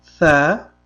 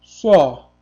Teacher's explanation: bu yerda fatha a emas, aynan o tovushini beradi.